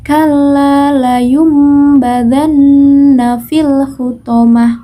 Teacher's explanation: badan nah disitu terdapat nun sukun bertemu dengan huruf ba maka nun sukun itu suaranya diganti menjadi huruf mim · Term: iqlab